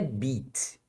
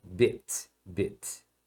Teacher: Esse I, você não fala I, igual em português, tá? É um som curto, relaxado, parecido com o nosso E fechado.